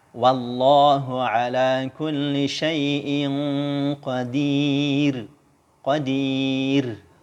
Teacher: Semua huruf ro yang dibaca sukun karena waqaf, yang sebelumnya ada huruf ya sukun. Ya sukun dibaca tipis.